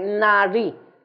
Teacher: è una d che diventa quasi una R